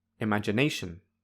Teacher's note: ne feels like the strongest syllable. By strongest, I mean it is the loudest, the highest, and the longest. Therefore, ne has primary stress.